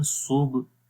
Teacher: ہا کی آواز بھی کلیئر ہے، لمبا بھی کر رہے ہیں